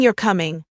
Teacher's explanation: saying you're coming with a rising tone indicates you're seeking confirmation.